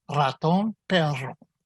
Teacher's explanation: You have to force air across the relaxed tongue so that it flutters and trills twice. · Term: a trilled R